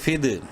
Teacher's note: فا دال زیر فد، قلقلہ کرنا ہے، دال حروف قلقلہ میں سے ہے، ساکن ہے